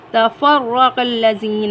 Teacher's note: را پر زبر ہے، را کو پر پڑھیں گے